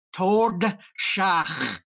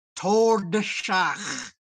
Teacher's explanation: getting that D in the roof of your mouth, the tongue has to come off, and then it has to go back up to get the S. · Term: tongue gymnastics